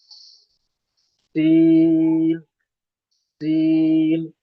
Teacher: اس کے بعد اگلا حرف سین، جس کا مخرج بھی وہی ہے جو زا کا مخرج ہے، یعنی زبان کے نوک کو سامنے کے اوپر نیچے کے دانت ملا کر بند کر کے پھر نیچے کے دانتوں کے اوپر سے زبان کے نوک کو لگائیں گے، اور زبان ذرا سی گھسے گی، سیٹی کی آواز آئے گی، سین، سین۔ آواز ہمیشہ پتلی رہے گی، باریک رہے گی۔